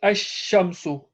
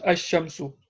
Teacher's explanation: the lam is not pronounced, rather the sheen gets a shadda. Shadda is the doubling sound.